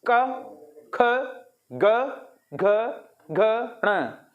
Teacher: कंठ व्यंजन या कंठ वर्ण इसलिए बोलते हैं, ये कंठ से उच्चारित किए जाते हैं।